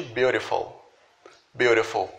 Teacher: Em uma pronúncia britânica, esse T até pode aparecer, mas em uma pronúncia americana, esse T ele vai ser transformado em R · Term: som de R